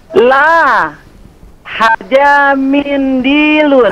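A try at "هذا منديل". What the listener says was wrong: Hadza, perbaiki lagi zalnya. Zalnya perbaiki lagi. Hadza.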